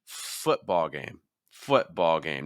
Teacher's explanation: Football game is a compound noun, so you need to make sure that foot gets your stress.